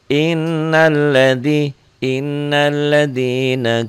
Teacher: dobel ditahan dan dengung ke hidung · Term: gunah